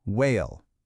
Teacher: For the W sound, like in the word whale, all you do is round your lips, almost like you're about to whistle.